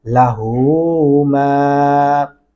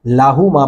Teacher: یہاں پہ بھی میں نے غلطی کو اکثر دیکھا ہے, لاہو ماں پڑھا جاتا ہے, لاہو ماں نہیں ہے, ہا کو لمبا کریں گے, الٹا پیش ہے اس کے اوپر